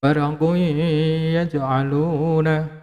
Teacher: Panjang dengungannya adalah 2 sampai 3 alif.